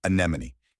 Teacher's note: It starts with a soft sound, followed by a stressed NEH, like may, then a quick ma, and ends with nee, like knee.